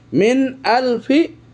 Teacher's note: সহকারে খাইরুম মিন এরপরে নুন সাকিনের পরে হামজা এসেছে অক্ষর এজন্য নুন সাকিন স্পষ্ট হয়েছে কোন গুন্না হবে না